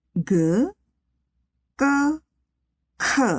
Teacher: G adalah bunyi dengan tekanan biasa atau lembut. Yang kedua, K adalah bunyi yang kuat atau keras. Dan yang terakhir tadi, K adalah bunyi hentak aspiratif.